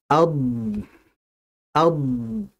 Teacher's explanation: Jadi artinya istitalah yang tadi bermakna memanjang atau melebar, maksudnya adalah dalam pengucapan huruf dad, itu kan makhrajnya di tepi lidah. Dia memanjang dan melebar sampai masuk ke dalam makhrajnya huruf lam. Maka dia disebut dengan istitalah.